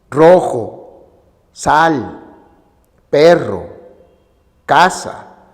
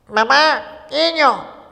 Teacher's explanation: Debido a la acción del velo del paladar, que se abre o cierra para permitir que el aire se desplace por la boca, estos sonidos son orales.